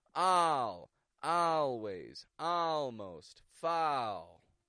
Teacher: this is an ah sound that quickly goes into an L